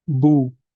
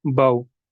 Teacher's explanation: जो वाव मद्दा है इसको हम एक अलिफ के बराबर खींच कर पढ़ेंगे, और जो सिर्फ वाव साकिन है इसको हम नरमी से पढ़ेंगे